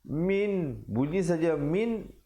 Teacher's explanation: nun mati bertemu hamzah jangan dipanjangkan. Sebut saja min terus masuk. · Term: izhar